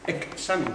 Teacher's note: aquí es una velar seguida de S